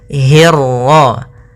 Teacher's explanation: hi-nya tipis, ketemu ro-nya yang tebal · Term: ra tafkhim